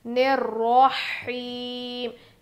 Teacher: यहाँ पे भी हुरूफ शमसी का ही कायदा है 2 जगह पे, तो अलिफ लाम नहीं पढ़ा जाएगा, रॉ पढ़ेंगे